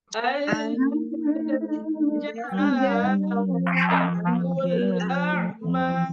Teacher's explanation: an itu ditahan ya, tidak ada yang baca anja tapi ditahan dulu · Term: ikhfa